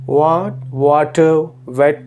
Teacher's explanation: when you say what water wet Etc your lips are rounded